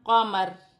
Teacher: قاف زبر قا، میم زبر ما، قامہ، را زیر ری، قاماری، وقفاً قامر۔ زیر گر جائے گی اور را ساکن ہو جائے گی۔